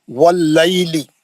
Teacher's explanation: वाव को कैसा पढ़ना? गोल, होंठ गोल करके पढ़ना।